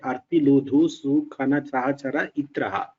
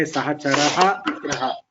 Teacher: these are two words, and there is a Visarga Lopa happening. Sahacharaha plus Itraha will be Sahachara Itraha. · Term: Visarga Lopa sandhi